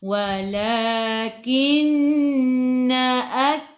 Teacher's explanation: nun ada sabdu apa dia kelas? Wajibul gunnah. Dengung 2 harakat. Wajib dengung.